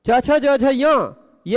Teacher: च, छ, ज, झ, य पांच वर्ण ऐसे हैं जिनका उच्चारण स्थान तालु है और आभ्यंतर प्रयत्न स्पष्ट है